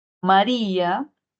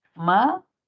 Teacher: El hiato acentual, que viene a ser justamente una vocal cerrada con una vocal abierta, donde la cerrada lleva la mayor fuerza de voz